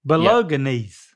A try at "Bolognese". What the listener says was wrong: But after the G, it's the N. I actually don't know how to say this one either, but I know you're not saying it right. Bolognese. Bolognese.